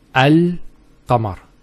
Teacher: the articulation point of the lam and the qaf are far apart. So the L is where the teeth and the tongue come together, and the qaf, aq, comes from the throat, which is far from the articulation point of the lam.